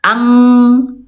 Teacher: kalau qaf dia tingkat kesamaannya rendah, lebih banyak dengungnya. Langsung dekatkan ke makhrajnya huruf qaf.